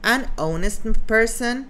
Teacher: Yeah, but the H is soundless. That's why we use an instead of a.